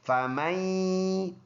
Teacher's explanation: نون میں یہاں پر آواز ناک میں جائے گی، ادغام ہوگا، اور ادغام اس کو مع الغنہ کہتے ہیں، غنہ کے ساتھ اس میں ادغام ہوگا.